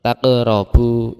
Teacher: Bacaan memantul itu disebut qalqalah di tengah bacaan, qalqalah sughra. Sughra itu artinya kecil.